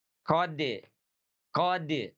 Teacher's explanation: Dari mana huruf dal itu makhrajnya? Huruf dal itu makhrajnya dari ujung lidah kita, ya, ujung lidah kita bertemu dengan gusi atas.